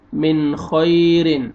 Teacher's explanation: نون ساکن کے بعد حروف حلقی میں سے خار ہے، یہاں پہ آپ نے اظہار کرنا ہے اور آگے یا لین ہے، یا سکون سے پہلے زبر ہے، خا کو آپ نے نرمی سے ادا کرنا ہے۔